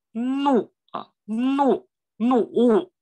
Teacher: 这个怒也要用舌尖打上牙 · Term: 鼻音